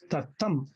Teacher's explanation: the first syllable is unstressed, the second syllable is stressed. So tatam. The second syllable should receive the stress, the accent. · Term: iamb